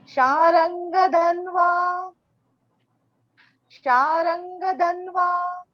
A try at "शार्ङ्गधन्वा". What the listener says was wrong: देखिए शार्ंग रा पूरा नहीं बोलना है, आप जैसे शांगा बोल रही है मध्य में रा डाल दीजिए। शार्ंग शार्ंग, ठीक है।